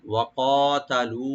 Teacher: ওয়া ওপেন থাকবে, কফটাকে একটু ডিপ করে একালিফ টানবো। তা ওপেন থাকবে, লাম একালিফ টানবেন এখানে